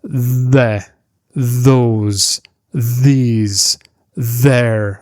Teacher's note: Words like the, those, these, their, this. We place the tip of the tongue between our teeth, just touching the upper teeth. Then we activate our vocal cords. There's a little bit of vibration and continuous airflow.